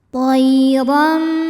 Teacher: Huruf ro dibunyikan secara tafkhim karena ro berharokat di atas, yaitu tanwin fathah. Cara membacanya adalah ditebalkan, pangkal lidah kita diangkat. Toiram. Ram hukumnya adalah iqlab, sebab ada harokat tanwin fathah yang menghadapi huruf ba.